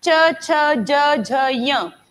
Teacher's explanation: सब में जबान टच करेगी तालु को, ये तालव्य है सारे